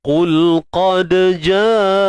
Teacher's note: Qalqalah sughra, lantunan kecil ataupun lemah.